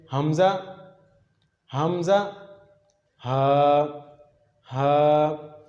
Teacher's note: अक्सा हलक की डेफिनेशन ये है, हलक का वो हिस्सा जो सीने के करीब हो। यहाँ से हम हमज़ा और हा अदा करते हैं।